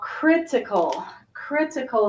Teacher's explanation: critical has the first syllable stress